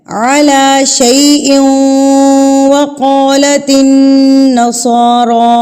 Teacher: علی لام کے اوپر کھڑی زبر ہے تو اس کو بھی ہم ایک حرکت کے برابر کھینچیں گے